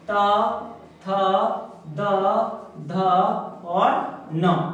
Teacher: इन पांचों वर्णों का उच्चारण स्थान भी कहां से होगा, दंत से होगा